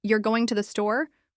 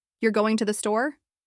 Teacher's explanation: with a flat intonation it sounds like a simple statement but if you say it with Rising intonation you're going to the store it sounds like a question